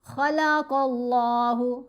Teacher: خا قاف دونوں کو موٹا پڑھیں گے، حروف مستعلیہ میں ہیں